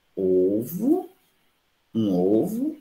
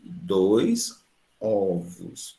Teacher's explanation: Você nota que a vogal que era fechada agora fica aberto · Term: metafonia